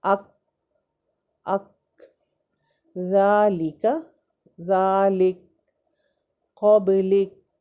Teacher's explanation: کاف کے مخرج کے قریب ہی منہ کی جانب نیچے ہٹ کر اس سے کاف ادا ہوتا ہے، یعنی اقصى اللسان اوپر ہٹ نہیں کرتا، بلکہ وہاں پہ ہماری ساؤنڈ، ہماری آواز رک جاتی ہے